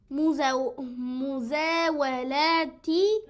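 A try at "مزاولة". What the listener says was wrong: Again, same thing. No alif. مزاولتي. No alif.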